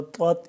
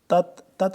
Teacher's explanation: پہلا طا ہے موٹا ہے، پھر تا ہے باریک ہے